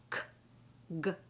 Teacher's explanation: This is in the back of the throat.